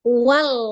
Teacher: tepi lidah dua tepi ya itu secara bersamaan bertemu dengan gusi atas jadi tidak diikuti dengan saf tidak ikut bibirnya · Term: lam